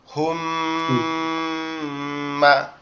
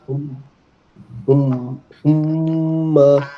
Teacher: হুম বলে আপনি গুন্না করবেন, কিন্তু হুম বলার পরে যখন ছেড়ে দেবেন তখন মা বলে টান দেওয়া যাবে না, মাতে কোনো টান হবে না।